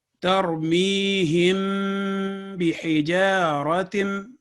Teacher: इसी तरह तरमीहिम बिहिजारतिन, तो आपने देखा कि हिम में 2 सेकंड का गुन्ना नेज़ल साउंड आया